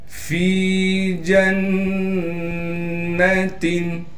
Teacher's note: فِي جَنَّةٍ فا کو یا مدہ سے ملا دیں گے اس لیے کہ یا مدہ ساکن ہے اور فا کو ایک الف کی مقدار کھینچیں گے. جیم کو نون سے ملا دیں گے اس لیے کہ نون پر تشدید ہے اور نون پر تشدید ہونے کی وجہ سے غنہ کریں گے. تنوین کو تا کے نیچے 2 زیر کی تنوین ہے، اس کو صاف کر کے بغیر غننے کے پڑھیں گے۔